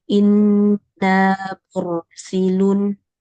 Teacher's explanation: tahan sedikit di huruf ro dan tebalkan tekan di tengah